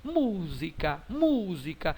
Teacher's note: Então esta palavra é uma proparoxítona, porque a sílaba tônica é a antepenúltima